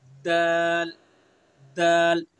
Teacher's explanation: जबान की नोक और सना उलिया की जड़